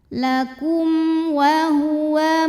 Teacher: Ada hukum idhar syafawi. Karena ada mim sukun menghadapi huruf selain mim dan ba, yaitu hurufnya waw, maka mim dibaca jelas